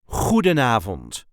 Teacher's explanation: you can put the emphasis on the first or third syllable